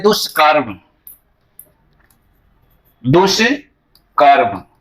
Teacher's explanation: तो यहां भी साथियों देखिए कि दुष्कर्म में यह दुष उपसर्ग है, ऐसे हो गया, यह श का जो है मूर्धन्य श हो जाता है, तो यह दुष्कर्म है।